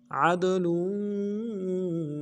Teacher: عدل عین کو دال کے ساتھ ملانا ہے، دال جب ساکن ہو قلقلہ میں سے ہوگا، قلقلہ کریں گے